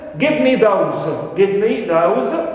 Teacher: those carries the extra stress and the intonational stress. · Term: tonic syllable